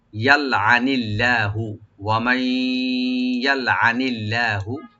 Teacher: আর লফজ জালাল এখানে লাইট হবে